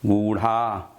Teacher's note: तो यही दो व्यंजन ऐसे हैं, ड़ा और ढ़, जिसमें रा की ध्वनि छिपी रहती है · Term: उच्छिप्त व्यंजन